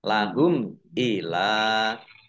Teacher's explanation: mim sukun bertemu dengan huruf alif, bacaan idhar safawi, dibaca jelas. Ila lam fathah berdiri mat tobi'i, tetapi karena bertemu dengan huruf alif di kata yang berbeda, maka menjadi mad jaiz munfasil.